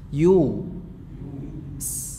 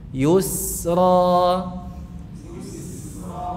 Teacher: Setelah dammu syafatain mencucu yu gitu ya. Mencucu pada pengucapan ya madmumah yu. Kemudian mengembalikannya ke posisi semula.